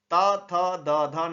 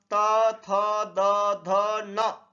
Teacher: वे व्यंजन जो जीभ की नोक द्वारा ऊपर के दांतों को स्पर्श करने से उच्चारित होते हैं उन्हें दंत कहते हैं।